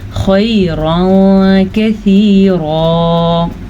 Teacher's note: ख़ैरन कसीरा, तनवीन के बाद हरूफ इख्फ़ा में से काफ आया हुआ है, तो हम तनवीन को छुपे हुए गुन्ने के साथ पढ़ेंगे